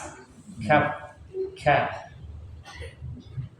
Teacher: Kaf makhrajnya di pangkal lidah menempel pada langit-langit keras.